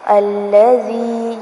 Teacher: الذي ذال کو نرمی سے پڑھنا ہے اور یہاں پر یا مدہ ہوگی، یعنی کہ زال زیر یا زی تھوڑا سا لمبا کریں گے